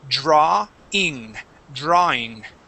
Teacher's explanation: That W does not make an oo sound in this word